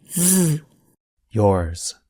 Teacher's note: But notice that the S at the end sounds like the letter Z.